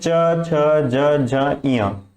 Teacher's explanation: जब भी हम बोलते हैं च छ ज झ इया तो हम अपने दांतों के मसूड़ों को जीभ से टच करते हैं। हमारे जो ऊपर वाले मसूड़े हैं उन्हें हम जीभ से टच करते हैं, तो इन्हें हम बोलते हैं तालव्य।